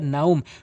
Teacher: কিন্তু এই লিনে হরফের বামে যখন ওয়াকফ করা হয়েছে, তখন মধ্যে লিন 1 আলিফ টেনে পড়তে হবে।